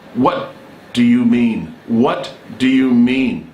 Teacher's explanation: the stress is put on the what